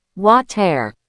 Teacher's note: In the UK, you might hear a very sharp T, water. But in the US and Canada, when a T is between two vowels, it often turns into a fast D sound.